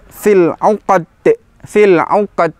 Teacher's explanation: Yang terakhir adalah di huruf dal. Dal sifat hurufnya adalah syiddah. Lebih ketara lagi, lebih kelihatan lagi ketika di waqaf atau mati. Fil 'uqad, fil 'uqad, bukan uqad tapi uqad.